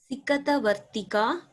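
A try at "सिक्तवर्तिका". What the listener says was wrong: Not Sikata. It's a conjunct letter.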